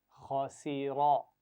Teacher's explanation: खा और रा को मोटा पढ़ना है और सीन दरमियान में बारीक आवाज है इसकी।